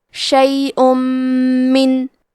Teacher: ادغام کا معنی ہے حرف کو حرف میں داخل کرنا، تو ہم تنوین کو میم میں ملا کے غنہ اور تشدید کے ساتھ یہ حکم کو ادا کریں گے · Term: ادغام بغنہ